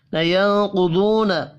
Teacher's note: نون ساکن کے بعد قاف ہے, اخفاء حقیقی ہوگا.